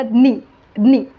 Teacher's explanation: यामध्ये ज आणि य ज आणि य यांचा संयोग आहे उच्चारामध्ये लिखाणामध्ये नाही